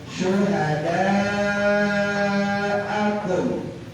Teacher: Panjangnya wajib 5 harokat ya, 5 ketukan. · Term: mad wajib mutasil